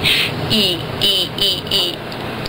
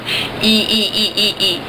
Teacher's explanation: it's as front in your mouth as you can go, and it's as closed as you can go.